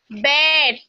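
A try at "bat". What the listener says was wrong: ব্যাট। এই শুনো শুনো, এটা লম্বা করলে তো লং হয়ে যাবে, এটা শর্ট। ব্যাট ব্যাট ব্যাট।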